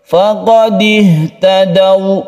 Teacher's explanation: ini membacanya sukun wawu yang sebelumnya ada fathah itu menuju u. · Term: mad lain